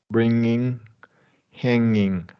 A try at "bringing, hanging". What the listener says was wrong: Exactly right.